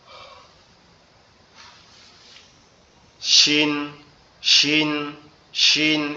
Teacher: শিন অক্ষরটা আমাদের জিহ্বার মধ্যকান উপরের তালুর সঙ্গে লাগবে